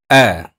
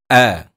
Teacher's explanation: menyebut huruf hamzah berbaris atas tempat keluar suara kita iaitu berada di bahagian pangkal halquum